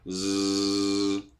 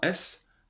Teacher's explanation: Donc elle fonctionne par paire. Le Z est la version voisée du SE.